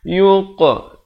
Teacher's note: Di sini qalqalah. Pantulan sughra. Pantulan kecil.